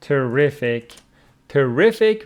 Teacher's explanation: terrific terrific with the stress on the second syllable